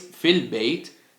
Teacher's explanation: when preceded by another word the Hamza and its vowel drop in both pronunciation and writing